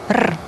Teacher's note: So unlike the English English sound it is a trill.